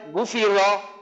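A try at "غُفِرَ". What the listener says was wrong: গুফি র, র জবর রা হবে না স্যার, আমরা পড়ছি যে র জবর আমরা র পড়বো, র জবর রা পড়বো না। গুফি র, গুফি র,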